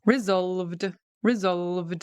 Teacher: It's got a D ending. We're engaging our vocal cords